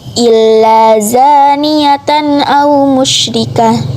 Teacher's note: izhar halki sebab tanwin bertemu huruf alif jadi dibaca jelas